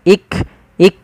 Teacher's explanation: dengan jelas Wal iqram lafal Kaf ik ik tapi bukan ikqram jangan sampai memantulkan huruf Kaf